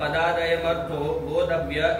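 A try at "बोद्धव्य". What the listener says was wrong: बोधव्य द नहीं है, बोधव्य लिखा है बोधव्य अभी भी वही कह रहा है, द बोलना नहीं आता है। बोधव्य अरे द है ना, फिर द है, बोधव्य।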